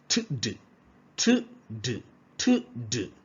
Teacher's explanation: The tongue comes in contact with the alveolar.